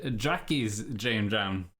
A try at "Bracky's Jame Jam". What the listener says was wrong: We're only changing the G to a J, not the B. we're not going for the B's too.